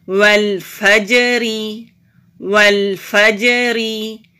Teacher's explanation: جیم ساکن ہے تو قلقلہ کریں گے، را باریک پڑھیں گے کیونکہ را کے نیچے زیر ہے.